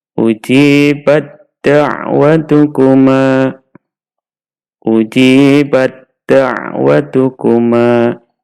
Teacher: Tak sukun bertemu dal. taknya kita masukkan ke huruf dal, kemudian dalnya ditasydid, sehingga membacanya ujibat da'watukuma, ujibat da'watukuma.